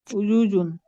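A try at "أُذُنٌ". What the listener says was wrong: উজুজুন না, উদুনুন। হামজা পেশ উ, দাল পেশ দু, নুন দুই পেশ নুন। উদুনুন, উদুনুন, উদুনুন।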